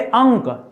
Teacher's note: अंक में खाली नाक से हवा निकलती है